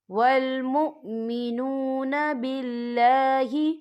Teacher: والمؤتون الزکاة والمؤمنون باللہ، یا دیکھیں والمؤمنو، یہاں پہ واو مدہ ہو رہا ہے، واو ساکن ہے، واو ساکن سے پہلے پیش ہے، تو ہم یہاں 2 یا 3 حرکت کے برابر کھینچ کے پڑھیں گے